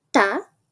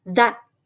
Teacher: El sonido t cambia a d